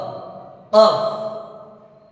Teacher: 4 নম্বর মাখরাজ, জিহ্বার গোড়া তার বরাবর উপরে তালুর সঙ্গে লাগাইয়া